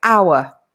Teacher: the word hour begins with a vowel sound. Obviously, it's written with an H, but the H is silent.